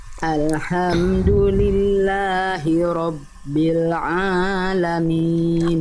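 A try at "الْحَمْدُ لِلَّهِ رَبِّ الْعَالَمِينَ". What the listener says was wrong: Oke, tapi A-nya jangan kepanjangan. Alamin, 2 harokat. Alhamdulillahi rabbil alamin.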